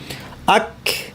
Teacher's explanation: কাফ ঠিকভাবে উচ্চারণ করতে একটু বাতাস ছাড়তে হবে আক কিন্তু এই বাতাসটা বাংলা খ এর বাতাস নয়। হ্যাঁ। আক